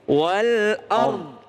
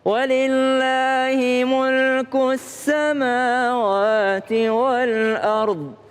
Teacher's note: Iya, kalau berhenti wal ard itu bo-nya jangan hilang ya. Wal ard ada bo di belakang.